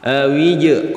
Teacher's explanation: Awij qalqalah sughra karena ada huruf jim yang berharokat yang disukun, cara bacanya dibaca pantul, pantulannya kecil.